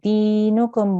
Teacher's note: You don't need to hold on the meme at the end